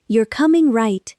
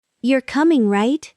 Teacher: with a rising hopeful tone